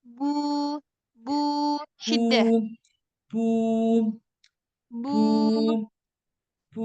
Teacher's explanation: jangan ada nafas yang keluar